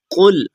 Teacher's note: یہ کاف موٹا ہے، بعض لوگ اس کاف کو باریک پڑھ بیٹھتے ہیں